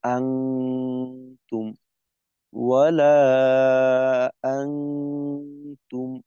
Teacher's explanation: থেকে গুন্না করব এইখানে মূলত আমাদের নুনের মাখরাজে থাকা যাবে না আমরা তা এর মাখরাজে থেকে গুন্না করবো · হয় নুন সাকিন এবং তানভীনের পর ইকফার কোন হরফ আসলে উক্ত নুন সাকিন তানভীনকে নাকের ভিতর লুকিয়ে গুন্নাসহ অস্পষ্ট করে পড়তে হয়